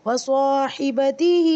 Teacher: صرف صاد کو لمبا کرنا ہے الف مدہ کی وجہ سے، اور ہا کے نیچے کھڑی زیر ہے، اس کو لمبا کرنا ہے کھڑی زیر کی وجہ سے. باقی سارے جلدی پڑھنے.